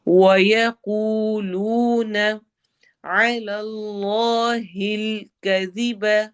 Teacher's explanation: عین کو حروف حلقی ہے تو حلق کے درمیان سے ادا کرنا ہے